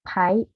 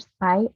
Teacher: the sound p in the word pie is aspirated, but the sound p in the word spy are not aspirated because the sound p in the word spy is not the initial position and it is preceded by s.